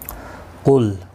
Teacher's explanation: قاف مستعلیہ ہے، پر پڑھا جائے گا، لام ساکن کو ہلانا نہیں.